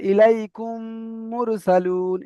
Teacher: মিম সাকিনের পরে যদি মিম আসে তাহলে মিমকে মিমের সাথে মিলিয়ে একালি পরিমাণ গুণা করে পড়তে হয়, একে ঈদগামে স্বাভাবিক বলে।